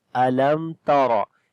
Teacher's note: After the meme sakin, the next letter is ta. We make izhar shafawi, the clear sound of meme. Alam tara. And this ta we read in light sound, ra we read in heavy sound due to fatha on it.